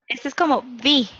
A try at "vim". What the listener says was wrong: Em português, o M final não é pronunciado como M em espanhol, né? Falamos vim, com N. Com N.